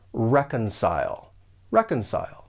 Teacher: For pronunciation, the verb has three syllables. The stress is on that first syllable. And keep in mind that the C has more of an S sound.